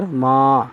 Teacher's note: الف سے پہلے زبر ہو تو الف مدہ کہلاتا ہے، اسے تھوڑا سا کھینچ کر پڑھیں گے ایک حرکت کے برابر